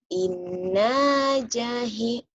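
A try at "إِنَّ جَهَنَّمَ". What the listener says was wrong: inna jahan, bukan jahi, jahe, bukan. Innya ditahan, a-nya dilepas. Jadi yang panjang tuh an-nya ya. n tuh, jadi kalau dilatenkan kayak gini ya, nih. N-nya itu banyak.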